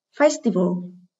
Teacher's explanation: đây là danh từ có 3 âm tiết, âm thứ 2 là Y, nên trọng âm rơi ở âm tiết số 1.